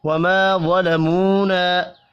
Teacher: الف مدہ, واو مدہ اور پھر الف مدہ, تینوں ایک ایک الف کے برابر کھینچ کر پڑھے جائیں گے. واو کو پر پڑھنا ہے.